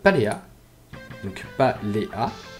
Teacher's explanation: Et donc, les hiatus, quant à elles, sont une combinaison de 2 voyelles qui, elles, se prononcent chacune indépendamment